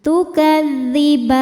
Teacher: Mad tabi'inya fathah panjang pada huruf ba, kemudian huruf yang disukunkannya nun. Maka ba-nya panjang, boleh 2 atau 4 atau 6 harokat asal konsisten dalam 1 kali duduk. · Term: mad arid li sukun